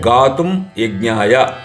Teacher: అనుస్వారం తర్వాత యకారం ఉంది కాబట్టి గాతుయ అంటే రెండు యకారముల యొక్క ఉచ్చారణ వస్తుంది. అదే వకారం ఉంటే రెండు వకారాలు అదే లకారం ఉంటే రెండు లకారాలు వస్తాయి.